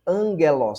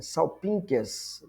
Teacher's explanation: antes das letras gama, de capa, xi e ki, pronuncia-se como N